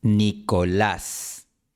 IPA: 'ni.kə.ləs